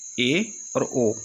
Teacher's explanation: अर्ध संवृत होता है जिसमें मुख द्वार आधा बंद रहता है, तो इसमें आते हैं ए और ओ।